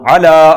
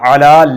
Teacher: عین حروف حلقی میں سے ہے، اس کو درمیان والے حلق سے ادا کیا جائے گا۔